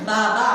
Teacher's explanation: बाबा म्हणत असताना ओठ काय होतात विलग होतात